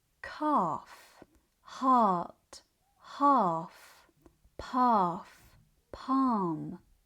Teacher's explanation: the R and the L are accomplishing the same task. They're telling us that the vowel sound needs to be longer and deeper. So, instead of focusing on the L, focus on producing a long open vowel sound.